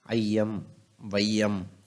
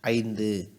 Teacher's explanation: இந்த ஐ வந்து முன்னாடி வருது அப்படின்னா அது தனக்குரிய ரெண்டு மாத்திரை அளவிலிருந்து குறுகி ஒன்றரை மாத்திரையாக ஒலிக்குது